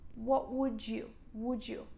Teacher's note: And the second one, "What would you like to drink today?" Pay attention, I don't say "what would you," I say "would you." This is the second pronunciation rule. When you have D followed by Y, D is pronounced like j sound.